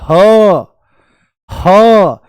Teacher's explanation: जैसे ही बोलेंगे ह तो आपको हल्की सी गर्मी महसूस होगी। क्यों? ऐसा क्यों होता है? क्योंकि वायु अंदर घर्षण करके बाहर निकलती है